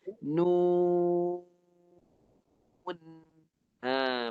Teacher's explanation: Lepas waw mati, nun dimatikan tekan di hidung. Lidah naik dan tekan di hidung.